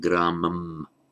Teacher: I pronounce gramam as it would be pronounced in isolation, using the pure M, consonantal M sound